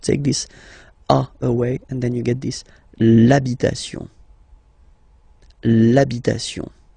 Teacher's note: Even if you've got this h, then the first sound you hear is a.